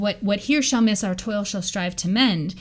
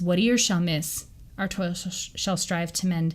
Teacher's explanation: If you read it in the original pronunciation, it's what ear shall miss, our toil shall strive to mend, because they didn't pronounce the H at the start of here